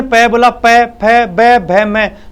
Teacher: दोनों होठ एक दूसरे को छूते हैं, इसलिए छूने को कारण, स्पर्श करने के कारण इनको स्पर्श वर्ण बोल दिया